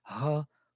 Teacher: It's ka, which is not touching, but creating friction on the same level. Like a sand. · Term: fricative